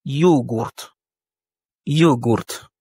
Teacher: Ici, l'accent tonique est mis sur le O.